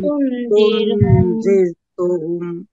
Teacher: জির র সাকিন তার ডাইনে জের চিকন করে পড়বেন